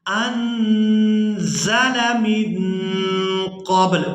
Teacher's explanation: نون ساکن پر ہم نے اخفا کرنا ہے، یعنی نون کی آواز کو ناک میں چھپا کر ادا کریں گے